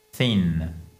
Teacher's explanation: vous passez votre langue entre les dents du bas et les dents du haut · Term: soft TH